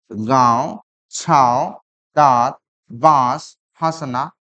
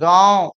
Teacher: इसकी जो ध्वनि निकलती है मुख से तो निकलती है, साथ साथ नाक से, यानी नाक और मुख दोनों पे जोर पड़ता है। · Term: चंद्र बिंदु